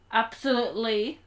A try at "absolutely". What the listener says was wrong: No, harder T. No, you're not saying the T hard enough. No, harder T. Yeah, yes you can.